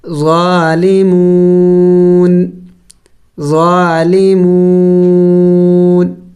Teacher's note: وقف میں نون کو سائلنٹ کریں گے یعنی ساکن کریں گے